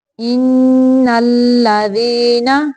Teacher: ان پہ نون مشدد کا غنہ ہوگا، لام کو باریک پڑھنا ہے، موٹا نہیں پڑھنا۔